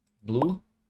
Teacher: É um encontro de duas consoantes, né? Você consegue perceber o som do B e o som do L, mas você não separa, porque as duas estão dando o seu som aqui, né?